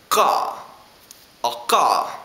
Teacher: It's the uvular stop.